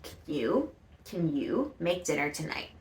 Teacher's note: because the important thing in the question is making dinner that is what is being emphasized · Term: connected speech